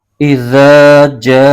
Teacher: اس کو اب 2.5 الف کی مقدار لمبا کھینچ کے پڑھیں گے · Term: مد متصل